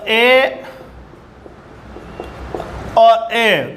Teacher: इनका जो संपर्क यानी उच्चारण होता है कंठ से भी होता है और तालु से भी होता है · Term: कंठ तालवे स्वर